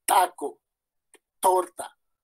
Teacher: vamos a tener un momento de explosión, la T